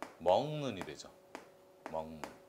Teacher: 기역이 니은을 만나서 이응으로 바뀌었습니다. 이런 게 바로 대표적인 비음화의 예입니다.